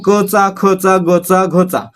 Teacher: उच्चार करताना आपला उच्चार आहे तो घशातून होतो म्हणजे कंठातून होतो कंठातून हवा बाहेर फेकून होतो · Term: कंठवर्ण